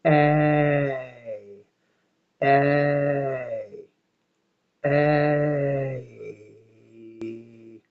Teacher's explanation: So if I slow down A and I say A, A, I'm hearing A, I'm hearing E at the end or close to it. It's closer to E than it is to I.